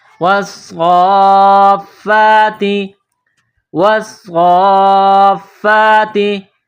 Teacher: آئیے اس کو پڑھتے ہیں، واو صاد زبر والصاد، فا مد، کڑا زبر صاف، فا کڑا زبر فا، والصافا، واو صاد زبر والصاد، فا مد، کڑا زبر صاف، فا کڑا زبر فا، والصافا، تا زیتی، نقطوں والی تا چھوٹی تا اس کو باریک پڑھیں گے